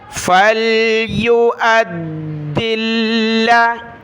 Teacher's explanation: دال اور لام کو سخت کیا تشدید کی وجہ سے